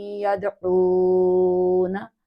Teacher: دال ساکن ہے اور یہ جنبش سے پڑھی جائے گی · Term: قلقلہ